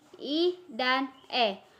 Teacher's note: secara horizontal vokal depan yaitu berbunyi i dan e